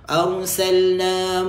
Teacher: رَا dibaca tebal sebelumnya berbaris fathah.